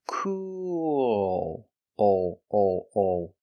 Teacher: you're using a dark L with the tongue in the back · have the long ooh sound like Moon and food C but when we connect to the L we use a dark L and we have an extra sound